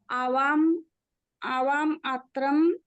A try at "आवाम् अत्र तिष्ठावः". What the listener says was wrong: आवाम अत्रम नहीं, अत्र, आवाम अत्र तिष्ठावः, वयम